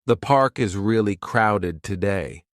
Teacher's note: The falling tone at the end makes it clear this is a comment, not a question.